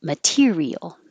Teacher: it won't change to a d because it's in the stressed syllable so it stays a t